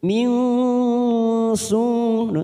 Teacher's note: nun sukun bertemu sin, ikhfa hakiki, kita samarkan 3 ketuk